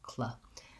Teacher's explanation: the back of your tongue lifts for the K, and then the front of your tongue needs to lift for the L, cl. It might be easier to try it with the air vowel, clair, clair. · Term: KL sound blend